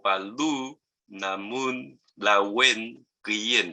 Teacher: Y hay también algunas interdentales, como Paldu, Namun, Lawen, Kuyen, que las interdentales significa que la L ya no se pronuncia como la L que conocemos, sino que se saca un poquito la lengua para poder hacer la pronunciación